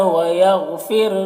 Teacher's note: رائے ساکنہ سے پہلے فا کے نیچے زیر ہے تو را کو باریک پڑھیں گے